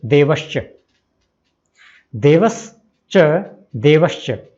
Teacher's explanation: स बदलता है तालव्य श में, शेर वाले श में।